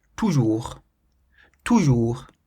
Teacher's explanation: it ends in the letter S, but we don't pronounce the letter S